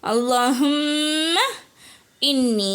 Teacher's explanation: அல்லாஹும்ம இன்னி ஷத்து வந்திருக்கு. நல்லா குன்னா செய்யணும்.